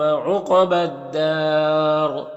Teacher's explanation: یہاں پر وقف کریں گے تو را کو پر پڑھیں گے اور مد عارض وقفی ہوگا